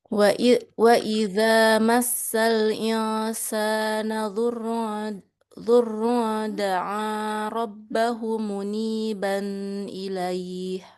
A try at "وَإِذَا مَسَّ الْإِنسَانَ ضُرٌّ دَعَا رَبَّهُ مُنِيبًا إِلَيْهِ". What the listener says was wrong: Wah, ini banyak banget nih yang masih kurang pas. Durrun da'a rabbahu, hunya panjang, muniban ilaihi juga.